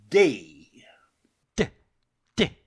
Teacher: is about these without a doubt the consonant D for example is pronounced by clapping the tongue above the upper teeth